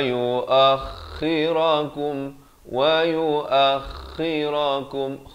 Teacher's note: Kha ni makhrajnya di hujung kerongkong